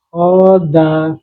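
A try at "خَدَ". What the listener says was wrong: Tidak panjang. Tidak. Khoda, kalau antum bacanya khoda, itu panjang kho-nya, tapi khoda.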